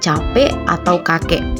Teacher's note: direalisasikan secara berbeda dengan lambang bunyi glotal pada kata capek atau kakek